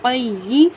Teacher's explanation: یا مشدد سے پہلے قاف کے ساتھ سختی سے ملائیں گے